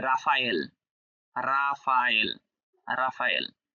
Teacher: যে French African ফ্রেঞ্চে আর এর উচ্চারণ র উচ্চারণ হয়